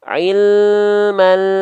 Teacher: huruf lam punya sifat yang namanya tawassut teman-teman tawasut itu artinya Dia sedikit mengalir suaranya jadi antara AL dengan ya Enggak boleh ada putus